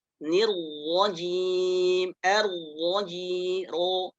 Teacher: Nah, ini ro yang tebal, ya. Ujung lidah dengan gusi dekat gigi seri bagian atas. Kemudian bagian pangkal lidahnya itu naik